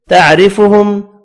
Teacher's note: را کو باریک پڑھیں گے زیر کی وجہ سے، میم کا اخفا ہوگا.